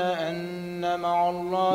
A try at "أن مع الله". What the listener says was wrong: مش مع كما نبهت عاد مع الله خرج العين